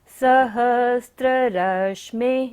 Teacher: सहस्र रश्मि में विसर्ग है, तो यहाँ पर हमें सारी सांस का विसर्जन करना है